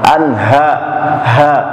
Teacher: Suaranya di tenggorokan dan tergetar di dada kita. Setiap huruf ha seperti itu. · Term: izhar halqi